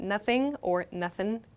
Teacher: we'll often drop this g sound